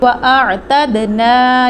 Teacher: عین کو حلق سے ادا کیا جائے گا, حروف حلقی ہے